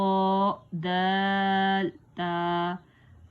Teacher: دال تا زبان کی نوک اور اوپر کے دانتوں کی جڑ سے ادا ہوتا ہے، یعنی جہاں سے ہمارے دانت اوپر سے شروع ہو رہے ہیں وہاں سے تو دال اور تا کی ادائیگی ہوگی۔ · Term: حروف نطعیہ